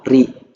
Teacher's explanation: Yang tarkik, ro berharokat kasroh, ri tipis